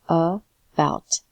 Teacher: bout is the stronger syllable. This is the emphasized syllable, and is unstressed.